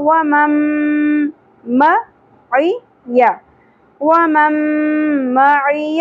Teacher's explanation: نون ساکن کے بعد حروف یمنو میں سے میم آ گیا، ادغام مع الغنہ ہوگا